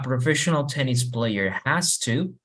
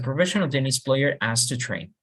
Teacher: Lo que vamos a hacer es intentar no pronunciar la H cuando hablamos rápido.